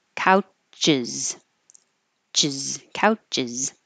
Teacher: So we say couch, stop the airflow, release it a little bit to make the S, and that will make the extra syllable uz.